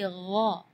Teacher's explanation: Di ayat ini yang pertama di makhraj huruf ghain ya, ghairil maghdubi ya, perlu diperhatikan bukan G, bukan huruf G ya, bukan ga, tapi gha. Jadi kalau ga itu dia makhrajnya dari lidah. Ya, tapi kalau huruf ghain itu dari bagian tenggorokan ya. Jadi gha.